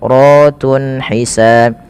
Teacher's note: Kemudian ratun ada mad tabi'i pada lafal ra, dan ra-nya di sini dibaca dengan tafkhim karena ra-nya dibaca berharakat fathah, maka dia dibaca dengan tebal